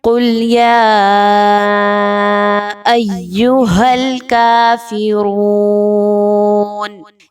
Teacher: قاف حروف مستعلیہ میں سے ہے، موٹا پڑھے جانے والا حرف ہے، اس کو موٹا ہی پڑھا جائے گا۔